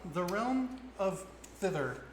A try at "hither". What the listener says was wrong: It sounds like you keep saying thither, not hither. Is it hither? it sounds like you're saying thither, and I was like